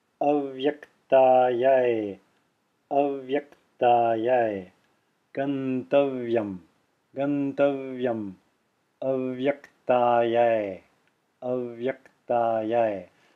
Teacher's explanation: I'm saying Gantavyam. I'm extending the Va, which is conjoined with the Ya.